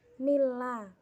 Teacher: Nama hukum tajwid di atas adalah idgham bila gunnah. Idgham tidak dengung karena ada nun mati menghadapi huruf lam.